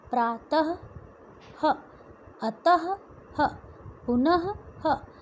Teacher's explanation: विसर्ग इसलिए कहा जाता है क्योंकि इसमें आधे ह के समान होता है।